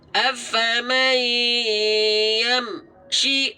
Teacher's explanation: seharusnya tidak ada jeda antara bunyi 'm' dan bunyi 'shi'